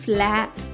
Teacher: అచ్చులు జంటగా వచ్చినప్పుడు వాటి మధ్య హల్లు లేకపోతే అవి సంయుక్తాక్షరం అవుతాయి కాబట్టి ఎఫ్ ఎల్ యొక్క శబ్దం ఫ ల కాకుండా ఫ్ల అవుతుంది